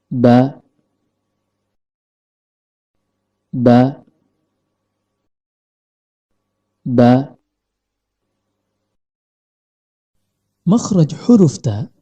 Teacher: huruf ba keluar dari tempat pertemuan antara bibir bawah dengan bibir atas dan kondisi lidah dalam keadaan normal